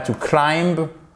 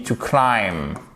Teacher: Vous ne prononcez pas le B ici, d'accord? Elle ne se prononce pas.